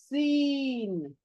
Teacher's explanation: ऊपर और नीचे के दांत नजदीक आते, करीब आते हैं, और पीछे से जो जुबान है सीटी बजाने के अंदाज से आकर पड़ती है। देखिए, सुई वाली, ये इसकी आवाज सुई वाली है, एकदम बारीक, प्योर सीन। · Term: सीटी वाली सीन